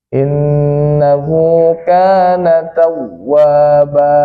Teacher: setiap yang tanwin kita berhenti di tanwin fathah itu Ah itu panjangnya dua harkat namanya Mad iwad